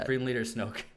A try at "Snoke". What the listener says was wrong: You just said Snope. You'll hear it. You'll hear it when you play this back. Snoke